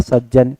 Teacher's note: ता के बाद में यदि ज झा हो तो ता ज में बदल जाता है